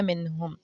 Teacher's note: اسی طرح اگلا ورڈ اگر میں آپ کو اگزامپل کے طور پہ دوں گی تو وہ ہے منہم، मीम नून साकिन के बाद हा आ रहा है, हरूफ हल्की में हमारा हा है, जी है, इसीलिए हम नून की आवाज़ को नाक में नहीं छुपाएंगे, गुन्ना नहीं करेंगे, इसको नून को सिंपली हम ज़ाहिर कर देंगे कि ये नून साकिन हो गया है, नून के ऊपर जज़म आ गई है, मिनहुम।